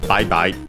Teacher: accented on the first syllable